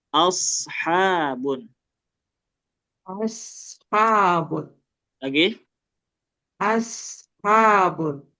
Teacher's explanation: kalau shad pakai ujung lidah.